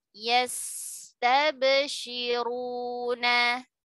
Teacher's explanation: Sin ketika sukun jauh lebih panjang durasinya karena dia sifatnya rokhawah dibandingkan dengan ba dalam keadaan sukun karena dia adalah syiddah.